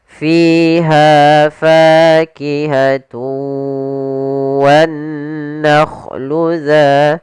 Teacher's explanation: usahakan panjangnya Fi ha Fa harus sama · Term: Mad thaii